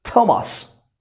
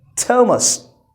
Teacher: Even though the word Thomas begins with a TH sound, but still American pronounce it like a T sound.